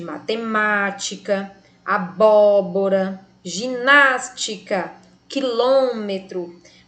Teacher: Percebemos que a antepenúltima sílaba de cada uma é a mais forte, elas são proparoxítonas e por isso todas são acentuadas.